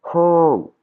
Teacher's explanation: Il y a de l'air qui sort avant mon O.